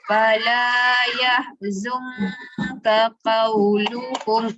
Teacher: Fala yah, lembut. Zung, dengungkan, pangkal lidah yang dalam tu naik ke atas.